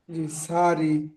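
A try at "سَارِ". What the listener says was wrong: জিহ্বাটি উপরে চেপে ধরেন, জিহ্বার বিষ্কানটি, সারি। সা বলে টান হবে শিন টান হয়ে যাচ্ছে, সারি।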